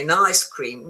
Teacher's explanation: if I'm talking, I say an ice cream with the stress on the ice.